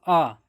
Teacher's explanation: देखो अगर बोलो आ, जीभ बीच में रहती है, न ऊपर जाती है और ना ही नीचे जाती है। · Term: विवृत